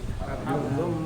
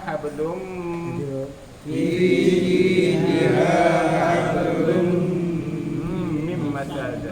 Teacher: Asalnya hablun kan. Kemudiannya tindih nun dengan mim. Jadi hablun jadi hablum.